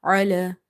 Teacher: Ain is from the middle of the throat.